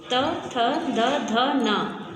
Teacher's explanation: ये हमारे दंत से स्पर्श करके उच्चरित होते हैं, तो इसे हम दंत स्पर्श व्यंजन कहते हैं।